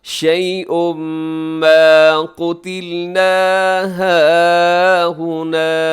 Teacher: شيء میں تنوین کے بعد میم ادغام ہوگا تو غنے کے ساتھ